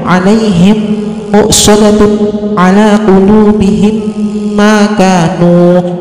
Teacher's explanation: mim sukun dimasukkan atau digabungkan dengan mim di depannya dan berdengung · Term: idgham mimi